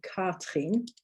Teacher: the r in german it's a little bit like the r in french and that it comes from the back of your throat but it's not quite as harsh as a french r i